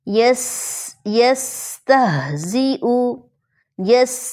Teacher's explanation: سین یہ باریک اور سیٹی والا حرف ہے